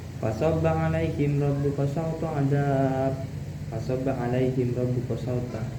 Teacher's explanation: huruf ro-nya di sini harus dibaca tafkhim atau tebal.